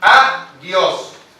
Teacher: Se acentúa en la última sílaba, siempre de derecha a izquierda se cuentan las sílabas. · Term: aguda